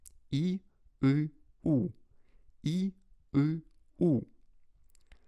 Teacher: Рот постоянно прикрыт, и язык находится высоко, но при этом он отодвигается все дальше и дальше назад. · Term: закрытым гласным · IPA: [i - ɨ - u]